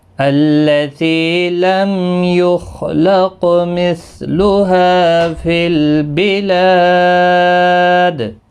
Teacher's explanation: میم ساکن کا اظہار ہوگا، خا مستعلیہ ہے، پر پڑھا جائے گا، قاف بھی پر پڑھا جائے گا، اس پر قلقلہ بھی ہوگا۔